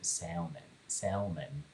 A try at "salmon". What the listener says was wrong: It's salmon, yeah. The L is silent. Salmon.